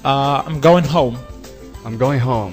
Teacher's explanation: Look, at the end of the word, in the beginning, in the middle, whatever, you have to cancel the G sound. You have to stop on N.